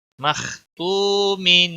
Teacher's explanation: वाव मद्दा है, एक अलिफ के बराबर इसको खींचना है, खा मोटा पड़ा जाएगा